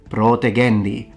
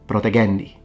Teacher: protegendi is supposed to have a long O, protegendi, rather than protegendi.